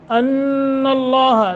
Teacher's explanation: नून मुशद्दत है गुन्ना करेंगे